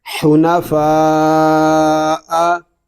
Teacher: یہاں مد متصل ہو رہا ہے اور ہم اس کو کھینچ کر پڑھیں گے